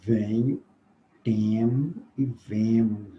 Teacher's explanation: A vogal E nasalizada. Venho, temo e vemos, né? Todas as três pelas vias nasais.